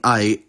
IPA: ɑi̯